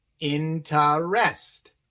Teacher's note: En la palabra interest tenemos 2 letras E. La sílaba de en medio igual es la sílaba no acentuada y por eso esta E se pronuncia A. mientras que la última sílaba es tónica, acentuada, y por eso esa E se pronuncia E.